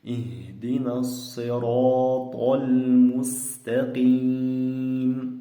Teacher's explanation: To deganda og'zimiz ishib yo'g'on holatda chiqadi. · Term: yo'g'on to harfi